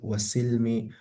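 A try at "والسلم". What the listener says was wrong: Wassalami itu bukan silmi. Silmi damai, tidak perang. Kalau salam, itu jual beli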